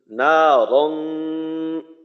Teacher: রকে মোটা করতে হবে কারণ রয়ে জবর আছে